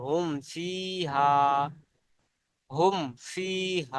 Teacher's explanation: 29 টি অক্ষরের মধ্যে অন্য কোন অক্ষরে যদি আসে তাহলে মিম সাকিনের আওয়াজকে বিনা গুন্নায় জাহির করে পড়তে হবে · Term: ইজহারে সাফাবি